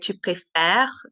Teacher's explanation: tu préfères, the R is the last sound because the ES is silent.